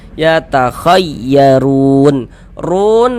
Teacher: Huruf ra kalau dia memiliki harokat dhammah atau harokat fathah, cuman di sini yang kita temui harokat dhammah nih atau tanda baca dhammah nih, maka huruf ra dibaca tabkhim, dibaca tebal, sehingganya pangkal lisan kita itu naik terangkat ke atas ketika kita mengucapkannya